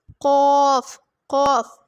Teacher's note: तालू के साथ जुबान की जड़ और तालू के बान की जड़ और तालू के नरम हिस्सा से अदा होता है · زبان کی جڑ اور تالو کے نرم حصہ سے ادا ہوتا ہے